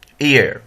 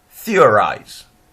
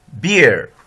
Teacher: In the monotone chart, it's a central vowel. And the gliding movement of the tongue in the centering diphthong chart is towards the schwa position